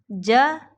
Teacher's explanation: اب اکثر لوگ اس میں جو غلطی کرتے ہیں وہ جیم میں چے کی آمیزش لے کے آتے ہیں